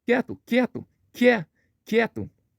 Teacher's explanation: Começa com a semivogal iode e termina com o som forte da vogal E. · Esse som do Q é representado pela letra K. E esse I é muito fraco, ele fica do lado aí do E, e ele é muito fraco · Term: ditongo crescente